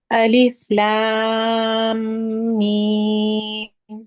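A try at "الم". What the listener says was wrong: मीम पे दो हरकत रोकनी है, और ला ला पढ़ते हुए ना, ला नहीं करें, ला नहीं, लैम।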